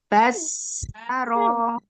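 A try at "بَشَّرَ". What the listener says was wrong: Pakai shin.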